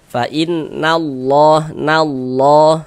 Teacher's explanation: Huruf lam jalalahnya dibaca tebal maka ini dibaca fainnallah nallah.